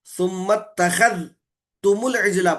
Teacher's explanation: زال کا تا میں ادغام کر کے پڑھتے